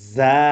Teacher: জিহ্বার আগা সামনে নিচের দুই দাঁতের পেট ও আগার সঙ্গে লাগিয়ে উচ্চারিত হয়